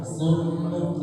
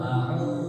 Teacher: harus diperjelas dengan tetap menampakkan dhammah di bibir kita, memonyokkannya